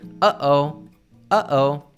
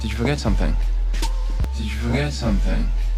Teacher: The secret here is the glottal T, where the T at the end of words is cut off at the back of the throat